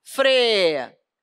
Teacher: Ditongo crescente é isso, ó. Primeiro a semivogal, depois a vogal. O I é fraco e o A é o forte.